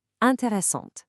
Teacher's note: when you add that e at the finish line for a female subject like Lisa, it literally forces you to pronounce the consonant right before it. The e makes the t sound pop.